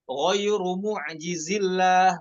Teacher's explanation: ketika kita wasol dihapus huruf madnya pada kata mu'jizinya. Ghairu mu'jizillah, bukan mu'jizillah, bukan, salah.